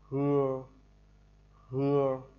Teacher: chữ hờ đọc như chữ hưa, hưa nhưng mà hơi nổ trong cổ họng